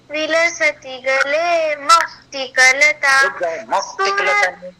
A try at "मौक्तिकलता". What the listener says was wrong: रुक जाओ, मौक्तिकलता क्यों बोल रही हो? मौक्तिकलता नॉर्मली बोलो, उस पे स्ट्रेस देने की आवश्यकता नहीं है। मौक्तिकलता नहीं, मौक्तिकलता। अरे हाँ, मौक्तिक नहीं बेटा, मऊ औ नहीं बोल सकती हो, औ बोलो औ। हाँ, जैसे शक्ति कपूर बोलता है फिल्मों में आऊ, वैसा आऊ नहीं बोलना है, औ बोलना है। बोलो औ औ।